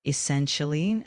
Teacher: The word essentially is pronounced as essentially with the emphasis on the second syllable